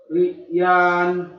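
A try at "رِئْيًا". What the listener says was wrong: Yan, jangan dibaca panjang Pak. Kalau dia tanwin jangan dibaca panjang. Riyan.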